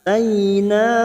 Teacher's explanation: Faqad atayna a fathah berdiri atau alif kecil di atas 2 harakat. Atayna fathah bertemu ya sukun huruf lain kita lunakkan. Taina mad yang bertemu dengan hamzah di lain kalimat mad jaiz munfasil 5 harakat kita panjangkan.